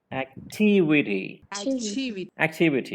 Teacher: you have to stress on the second syllable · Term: primary stress